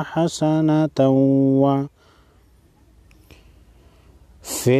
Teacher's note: تنوین کے بعد حروف یرملون میں سے واو ہے، غنہ کے ساتھ ساتھ ادغام بھی ہوگا